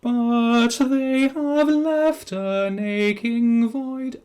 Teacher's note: it sounds almost like one word because we don't have the consonants to make sense of the gap between the two words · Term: joining up two words